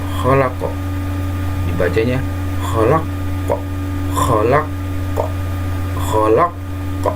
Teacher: qalqalah kubro, yaitu qalqalah besar, ya, mantulnya di akhir kata, bunyinya besar, artinya memantul.